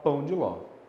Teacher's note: O D é a palavra mais fraquinha. São 3 monossílabos, uma delas é mais fraquinha, a gente chama de monossílabo átono.